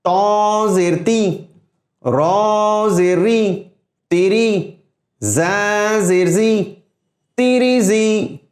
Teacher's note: تا موٹا حرف ہے، لیکن موٹے حرف کے نیچے زیر جب آ جاتا ہے تو اس کو بھی باریک کر دیتا ہے، یعنی موٹے حرف کی آواز کو بھی باریک کر دیتا ہے۔